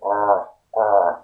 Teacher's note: and are it's a bit more throaty right or but still your tongue doesn't touch your teeth or your palate the tongue is curled up or and kind of touches your palate the upper palate or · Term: the r sound